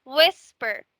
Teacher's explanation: the first syllable is the one that is stressed